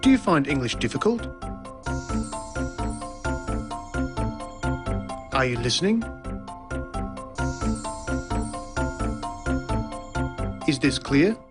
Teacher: the high or rising tone used for asking a yes-no question